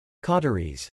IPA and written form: kɔtɹ̩iz (Cauteries)